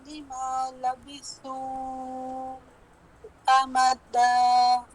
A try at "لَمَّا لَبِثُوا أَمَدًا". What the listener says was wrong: نہیں امدا، دال پہ شدہ نہیں ہے. ثم بعثناهم لنعلم أي الحزبين أحصى لما لبثوا أمدا.